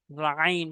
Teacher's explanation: আইন হলকের মাঝখান থেকে চাপ দেওয়া।